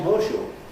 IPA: ˋhɔːʃuː